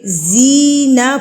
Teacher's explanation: یا ساکن سے پہلے اگر زیر آ جائے تو اس زیر والے حرف کو ہم ایک حرکت کے برابر کھینچ کے پڑھیں گے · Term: یا مدہ